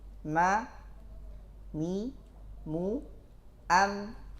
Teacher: Dilihat dari zahir yang nampak, dia keluar dari dua bibir, maka disebut mim baini syafatain.